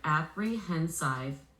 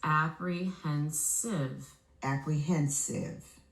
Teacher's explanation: When I blend them together, apprehensive, it doesn't sound right. I have to flex the last vowel to the schwa to adjust the pronunciation. When I do, the word becomes apprehensive.